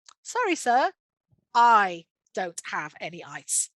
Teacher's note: So this time, the barman obviously needs to stress the fact that I don't have any ice. So it's the negative aspect of the sentence that contains the strongest intonation, that contains the meaning in that particular response to the customer's request.